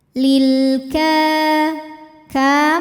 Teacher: alif lam menghadapi huruf qamariyah yaitu kaf. Maka lam sukun kita bunyikan dengan jelas. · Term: alif lam qamariyah